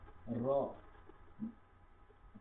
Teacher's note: র উচ্চারণ করব জিহ্বা উপরের তালুতে ঠেকিয়ে দিয়ে, র, র মানে এমন ভাবে লাগবে যেরকম একটু হালকা, মানে ওই জিহ্বাটা ওই ভিতরে কাঁপাকাঁপি করবে